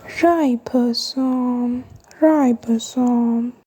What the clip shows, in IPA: ˈraɪ.bə.soʊm